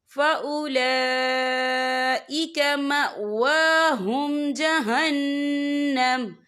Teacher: یہ مد جو ہے مد متصل ہے، اس کی مقدار 4 حرکت کے برابر ہے تو ہم اسے 4 حرکت کے برابر کھینچ کے پڑھیں گے